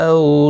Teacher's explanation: او واولین ہے، تھوڑی نرمی کے ساتھ کھینچ کر ادا کریں گے